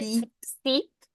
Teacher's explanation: the I usually comes out as E. So like fit would be feet